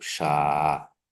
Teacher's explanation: शा इति पिशाच शब्दस्य मध्ये अस्ति, अतः अत्र मध्ये तालव्यवर्णः अस्ति, अतः पिशाच शब्दः मध्यतालव्यः वर्णः अस्ति इति भावः।